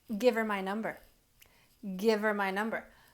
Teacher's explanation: my number so it sounds like V apostrophe e r so it actually sounds like we're making a contraction on that h word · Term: linking